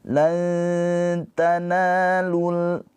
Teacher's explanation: Nah, karena ini bertemu dengan huruf ta, jadi caranya ikhfa itu lidah kita mendekat kepada makhraj. Ketika nun sukunnya bertemu dengan ta, maka ikhfanya itu lidah kita mendekati makhraj ke huruf ta. ta. Tapi jangan ditempelin. · ikhfanya itu lidah kita mendekati makhraj ke huruf ta. Ta, tapi jangan ditempelin. Kalau ditempelin dia jadinya idhar, bukan ikhfa lagi.